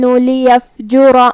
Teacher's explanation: کلمت لیفجر میں یہاں فا ساکن ہے تو ہم حرف الفا کو ہمزے سے پڑھیں گے۔ آخری میں را پہ زبر ہے تو ہم را کو موٹی آواز میں پڑھیں گے کیونکہ یہاں را کا حکم ہے تفخیم۔